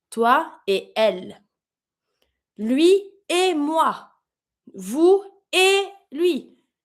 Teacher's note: Every time you have the et meaning and, you never do the link.